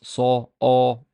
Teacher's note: That aw quality is what we call a velarized quality, as it comes from the back of your mouth, from here.